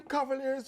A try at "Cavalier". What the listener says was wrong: Take off the S. The team name Cavalier.